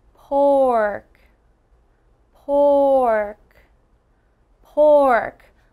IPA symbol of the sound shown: ɔːr